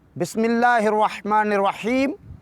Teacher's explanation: بسم اللہ میں اللہ کے لام کو باریک پڑھیں گے، کیوں؟ اس لیے اس سے پہلے زیر ہے۔